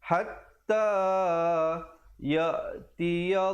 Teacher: Lafzul jalalah di situ dibacakan dengan wajah yang tebal dengan panjang 2 harakat.